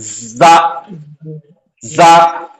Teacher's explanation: زا کے تلفظ میں زبان ٹچ نہیں ہوتی, لیکن زبان کی نوک کا حصہ اس کے ذریعے سے نکلتا, وہاں سے سیٹی کی آواز نکلتی, زا, زا.